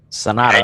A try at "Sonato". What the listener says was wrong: Yeah, but you got to roll it. Sonato. Yeah, Sonato.